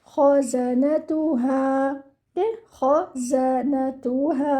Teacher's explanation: the kha should be with the bubbling sound